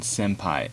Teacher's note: Sometimes the final N actually changes how it's pronounced based on the next sound, such as if a P follows after, like in senpai, you pronounce it as an M instead of ing